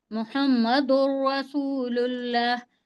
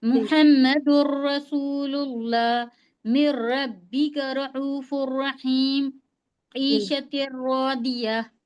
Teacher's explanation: लाम और रा दोनों जी बिला गुन्ना के पढ़ते हैं मिलाकर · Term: इदगाम ताम